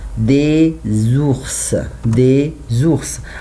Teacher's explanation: If I have the letter S after that I have vowel, I must change this letter to be Z.